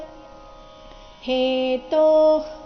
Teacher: ತೋ ಆದ ನಂತರ ಇರೋ ವಿಸರ್ಗದ ಉಚ್ಚಾರಣೆ ಅರ್ಧ ಖ ರೀತಿ ಬರಬೇಕು